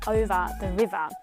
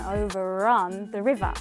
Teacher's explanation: the river you can hear it's just over the river but as soon as the next word has a vowel at the front then an R sound is pronounced